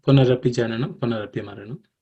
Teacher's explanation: The first line, Punarapi Jananam, Punarapi Maranam, does not contain any aspirated consonants.